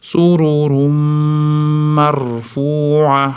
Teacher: Beda ham tanvin mimga yo'l qo'ygan uchun g'unnali idg'om bo'lyapti.